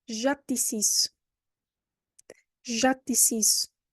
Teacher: you probably cannot hear the t because the final e is not going to be pronounced again